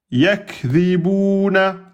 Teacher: le kaf soukoun, on laisse sortir le souffle. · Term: lettre de l'hams